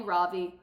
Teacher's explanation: In America, people call me Ravi, with a stress on the first syllable.